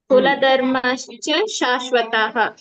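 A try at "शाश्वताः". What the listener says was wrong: ಎಲ್ಲ ಕಡೆ ಸ್ವಲ್ಪ ದೀರ್ಘ ಎಳಿಬೇಕು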